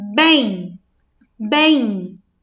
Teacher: Quando nós pronunciamos a palavra que tem esse EM no final das sílabas, nos parece, ao pronunciar, que ela é como se ela estivesse representando o som do I. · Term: ditongo nasal